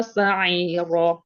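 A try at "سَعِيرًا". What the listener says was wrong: Roknya panjangnya sama kayak la. La-nya kepanjangan, roknya pas. La sa'ira.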